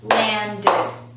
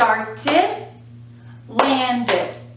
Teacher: you'll notice here that when we're putting these words into the past tense we're actually adding an extra syllable